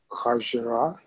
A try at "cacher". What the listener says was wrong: Cachere. Not ra. Re. Cachere.